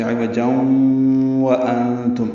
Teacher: ادغام ناقص ہوا، آواز ناک کے بانسے میں لے جائیں گے، جاؤں واو کو جلدی ادا کریں گے، ہونٹوں کی نا تمام گلائی سے۔ · انتم میں نون ساکن کے بعد تا آنے کی وجہ سے اخفا ہے، نون کی آواز چھپائیں گے، میم ساکن پہ اظہار ہوگا، اظہار شفوی ہے یہ۔